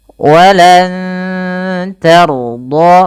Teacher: huruf ro-nya dibaca dengan tebal karena ia huruf ro yang sukun didahului dengan fathah. Walan tarda, bukan tarda, hati-hati bunyinya berbeda.